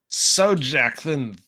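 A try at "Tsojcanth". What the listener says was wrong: Sokaneth. Sokanth? Sokanth? I think the J is silent.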